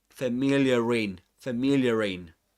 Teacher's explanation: It's a soft R sound. linking the two words. That's why it's called linking R.